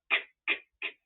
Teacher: not only is all this air shooting out, but you don't need a voice to pronounce a plosive consonant.